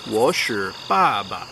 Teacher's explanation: It's S-H-I with a fourth tone, which is a down tone, so it starts high and goes low.